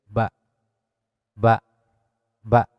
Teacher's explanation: Ba ieu sok biasa disebut huruf sapataen atanapi huruf dua bibir. Karena keluarna huruf ba ieu tina dua bibir.